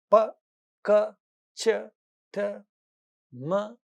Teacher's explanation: The only vowel sound that you find inbuilt, which becomes slightly prominent at the end of it is a. That is when we say p; we hear a at the end of it.